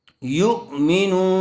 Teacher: پیش والے حرف کے بعد واو ساکن آیا ہوا ہے اس لیے واو مدہ ہوگا، تھوڑا کھینچ کر پڑھیں گے۔